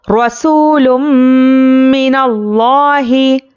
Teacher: रा पर ज़बर है, रा को पुर पढ़ना है। रा पर ज़बर या पेश हो तो रा को पुर पढ़ेंगे।